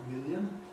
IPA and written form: ˡmɪljən (million)